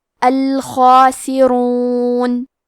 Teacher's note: خا کی ادائیگی حلق کے اوپر والے حصے سے ہے، خا حروف تفخیم میں سے ہے تو ہم یہ حرف کو موٹی آواز میں پڑھیں گے، کیونکہ اس پہ کھڑا زبر ہے تو یہ مد الف ہے لہذا ہمیں مد الف کو بھی تفخیم سے ادا کرنا ہے۔ · حرف الراء پہ پیش ہے، یہاں راء کا حکم ہے تفخیم تو ہم حرف الراء کو موٹی آواز میں پڑھیں گے